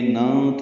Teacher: نون ساکن کے بعد تا آنے کی وجہ سے اخفا ہے، نون کی آواز چھپائیں گے